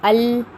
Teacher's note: نوک زبان کچھ کناروں کے ساتھ اوپر کے 2 دانتوں کے مسوڑے کو لگ جاتی ہے تو لام ادا ہوتا ہے · نون کا بھی مخرج یہی تھا کہ نوک زبان تالو کو لگ رہی ہے، لیکن جب ہم ال کہتے ہیں تو زبان کی تھوڑی سائیڈز یعنی تھوڑے کنارے بھی لگ جاتے ہیں تالو کو، اس وجہ سے لام کے مخرج میں کنارے بھی انکلوڈ ہونے کی وجہ سے اسے نوک زبان میں شامل نہیں کیا گیا۔ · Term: لام کا مخرج